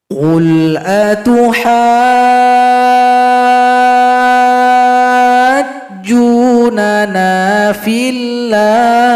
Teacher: Panjangkan ha selama enam harakat atau enam ketukan, lalu tambahkan tasdid pada huruf jim. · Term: mad lazim muthaqqal kalimi